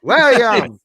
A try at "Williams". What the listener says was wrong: It's still 2 syllables. Is this player's last name one syllable? No.